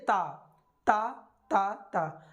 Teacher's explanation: जब हम ता बोलते हैं तो हमारी जो जीभ है वो ऊपर वाले दांतों और तालू में टच होती है, यानी अवरोध उत्पन्न हो रहा है।